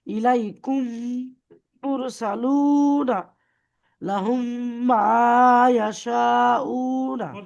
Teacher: মিম সাকিনের পরে যখন মিম আসছে, তখন ওই প্রথম মিমকে দ্বিতীয় মিমের দ্বারা সঙ্গে মিলিয়ে পড়তে হয় · দুটো মিম মিলিয়ে একটা মিম হয়ে যাবে